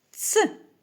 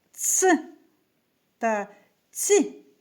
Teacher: звук ц твердий приголосний а ц - м'який